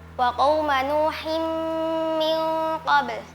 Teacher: Nun sukun bertemu dengan qaf. Hukumnya ikhfa hakiki dibaca samar.